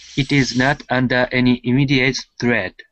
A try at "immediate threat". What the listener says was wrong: Probably one thing I could say about that was this immediate has the adjective stress here. So immediate threat.